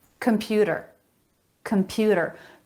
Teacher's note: a flap instead of t